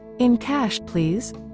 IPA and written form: ɪn kæʃ, pliz (In cash, please)